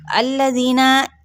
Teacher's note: अल्लज़ीना, حمزہ کی زبر کو لام کے ساتھ، لام کو ہلانا بھی نہیں اور ساتھ میں اس کی زبر کو بڑھانا بھی نہیں